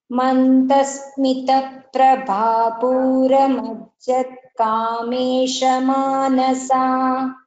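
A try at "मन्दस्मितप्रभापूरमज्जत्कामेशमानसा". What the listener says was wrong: Yes, uttamam. Dhanyavadaha.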